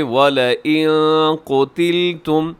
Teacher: یہاں نون ساکن ہے، اس کے بعد قاف ہے، تو یہاں پہ اخفا کیجیے گا۔